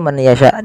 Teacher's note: memasukkan nunnya kepada huruf ya, dan hukumnya yaitu idgham bi gunnah